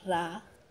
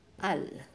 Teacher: nasa umpisa siya initial consonant ang pronunciation niya ay letter R pag nasa final consonant siya Siya ay nagiging letter L sound